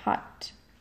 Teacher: In low center, we have Spanish A as in hot.